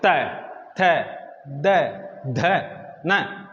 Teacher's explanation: चाहते हुए भी करेगी जैसे इन वर्णों को आप बोलेंगे तो जीभ ना चाहते हुए दांतों स्पर्श करेगी इसलिए इसे क्या कहते हैं दंत्य वर्ण